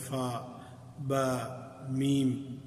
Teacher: البتہ با کو بہت زیادہ سختی سے بھا کر کے نہیں پڑھنا، تو یہ جو اتنی باریکی میں جو ان دونوں ہونٹوں کا آپس میں ملنے کا بتایا گیا ہے تو وہ اسی وجہ سے تاکہ ان میں وہ لطافت اور نرمی جو حرف کی ہے وہ باقی رہے، بہت سختی نہ پیدا ہو۔